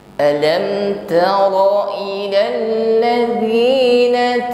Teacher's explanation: Alam tara ilal ladzina lamnya tasydid, ditekan membacanya. Namun huruf lam tidak boleh putus karena sifatnya tawassut, jarayan dan juz'i li shad.